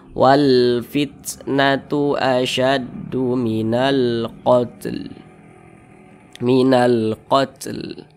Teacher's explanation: Nah, alif lam qamariyah itu biasa disebut juga dengan izhar qamariyah, karena dia cara membaca huruf lamnya itu diizharkan, huruf lamnya itu dibaca jelas gitu